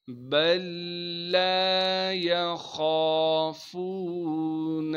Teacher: خا کے بعد الف مدہ ہونے کی وجہ سے خا کو ایک الف کے مقدار کھینچیں گے. فا کو واو مدہ سے ملائیں گے اور واو مدہ ہونے کی وجہ سے فا کو بھی ایک الف کے مقدار کھینچنا ہے. بل لا یخافون نون کو ہم آگے لام سے ملائیں گے جو کہ ساکن ہے. · خا کو موٹا کر کے پڑھنا ہے. خا کے بعد الف مدہ ہونے کی وجہ سے خا کو ایک الف کے مقدار کھینچیں گے. فا کو واو مدہ سے ملائیں گے اور واو مدہ ہونے کی وجہ سے فا کو بھی ایک الف کے مقدار کھینچنا ہے.